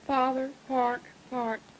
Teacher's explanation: your R is about half pronounced